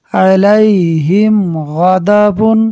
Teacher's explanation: اظہار شفوی ہوگا، یعنی میم ساکن میں غنہ نہیں کریں گے